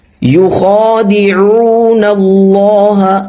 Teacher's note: اللہ کا نام یہاں پہ موٹا ہوگا کیونکہ اللہ سے پہلے جو حرف ہے اس پر زبر ہے، اس لیے اس کو موٹا پڑھیں گے